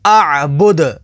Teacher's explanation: وقف تام کی وجہ سے دال کو ساکن کر دیں گے. دال حروف قلقلہ میں سے ہے تو یہاں پر قلقلہ ہوگا